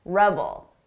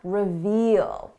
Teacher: Notice the difference in the vowel sound. This is a short sound, revel. Long sound, reveal.